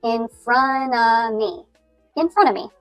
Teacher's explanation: you kind of drop the T at the end of front and you don't pronounce the VV sound at the end of of but drop that as well.